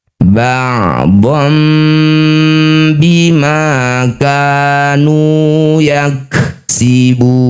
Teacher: Nah, bibir rapat dengung dua harakat. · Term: iqlab